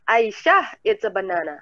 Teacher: Kita emphasize-nya di Aisyah.